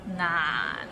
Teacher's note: pronounce so it starts with n and ends with another end and it's in the low tone